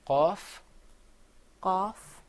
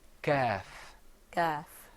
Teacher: the off sound comes way back in the very back of your throat you're gonna bring the sound on the soft palate way way